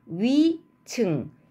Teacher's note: 첫 음절에 위나 외가 올 때는 우리가 단모음으로 발음하기 힘들어서 이중모음으로 발음하는 경향이 강해요